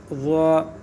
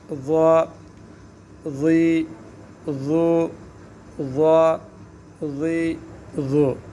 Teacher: زبان اوپر کی طرف اٹھے گی، منہ گول سا ہوگا، موٹا ہوگا حرف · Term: حرف مستعلیہ